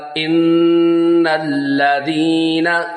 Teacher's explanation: ان غنہ کریں گے ایک الف کی مقدار